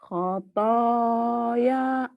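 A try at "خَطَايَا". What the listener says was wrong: Pendek ya-nya. Khotaya.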